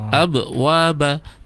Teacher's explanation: Jangan abwa tapi abwaba, qalqalahnya harus kuat.